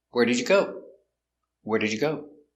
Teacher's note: here where is the important word so we stress where